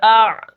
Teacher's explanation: عین کو ذرا زور لگا کر پڑھیں گے کیونکہ عین کے اوپر جزم ہے